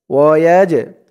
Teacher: এই জিমটা হচ্ছে কলকলার হরফ ধাক্কা দিয়ে পড়তে হবে